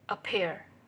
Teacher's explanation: The stress is mostly about 80% put on the second syllable.